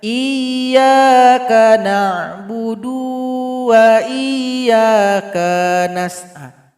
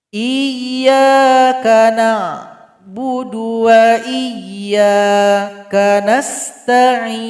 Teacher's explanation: Tapi karena huruf dal, huruf kaf, dia tidak dipanjangkan, maka bunyinya digabungkan kepada huruf berikutnya. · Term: bunyinya yang bergabung